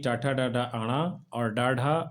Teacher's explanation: इसका उच्चारण स्थान है मूर्धा यानी मुंह के भीतर छत का अगला भाग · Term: मूर्धन्य व्यंजन